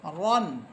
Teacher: পড়েছিলাম আমরা যখন এই হরফ গুলোর উপরে তানভীন সহ পড়বো তখন আমরা এখানে আকারের উচ্চারণ ছাড়া পড়বো অর্থাৎ আকার আমরা বলবো না